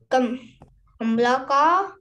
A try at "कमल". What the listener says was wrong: कमला नहीं, कमल है वो, कमल लिखा है बेटा। तो नन्ना सा, तुम ना नन्ना सा ये प्रोनाउंसिएशन याद रखो।